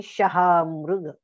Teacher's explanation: श शहामृगाचा हा तालव्य वर्ण आहे. श जीभची टाळूला लागते